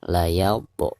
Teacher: cara membacanya harus dipantulkan dengan suara pantulan yang tipis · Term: qalqalah sugro